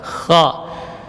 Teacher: Kha huruf yang keluar dari min adnal halqi, huruf yang keluar dari ujung tenggorokan. Kha, ya, huruf hamas dan rakhawah, jadi mengalir udara dan suara, tidak boleh bergetar